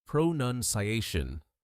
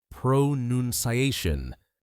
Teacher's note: There is no noun sound in the middle. It's noon, not noun.